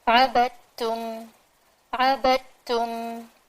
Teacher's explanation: تا کی آواز آنی چاہیے، دال کی بالکل بھی نہیں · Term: ادغام